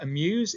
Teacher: It's an unstressed followed by a stressed syllable. So if you think about the word amuse, it's muse. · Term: I am